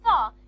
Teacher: Don't aspirate it because it's preceded by the sound s. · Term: normal t